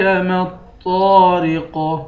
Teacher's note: طا کے بعد الف ہے، الف حروف مدہ ہے، اس کو 1 الف کی مقدار کھینچ کر پڑھیں گے۔